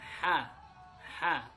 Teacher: huruf ha ini keluarnya itu dari tengah tenggorokan